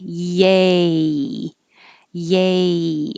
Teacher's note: when you say yay you're you're starting with your tongue in the y position and when you say the vowel a your tongue goes up higher so yeah i'm starting high yay yay and then you slide